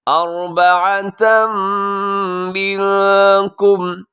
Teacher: اربعۃ منکم، یہاں پہ ادغام ہے غنے کے ساتھ تنوین کے بعد میم کی وجہ سے، اور منکم میں نون ساکن کے بعد کاف، یہاں پہ ہوگا اخفا، آواز کو ناک میں چھپائیے گا